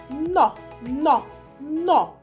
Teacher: коли ми вимовляємо звук н язичок торкається наших верхніх зубів повітря зустрічає перешкоду